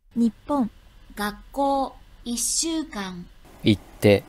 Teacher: Vous voyez, à chaque fois, on retient la consonne